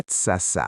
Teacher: The light Ä in the word demands a light Ä in the ending.